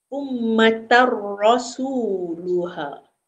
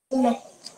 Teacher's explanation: Idgham bila gunnah, masuk tanpa dengung.